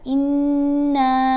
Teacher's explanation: نون کے اوپر غنہ بھی کیا, نون کو 3 الف جتنا لمبا پڑا, انا, اور را کو موٹا پڑھنا ہے.